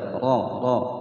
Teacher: ra panjang dua ketukan, ra dibaca tebal